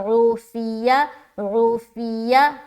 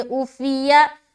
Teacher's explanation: یہاں پر ہم نے عین کو ظاہر کیا